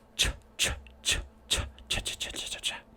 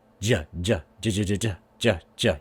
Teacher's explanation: As you can see, ch, the lips are open, the teeth are slightly open, the tongue is going up to the alveolar ridge, ch, ch, ch, ch, ch. And j is the same placement with the lips and teeth and tongue, just with the voicing. And remember, voicing is moving the vocal cords.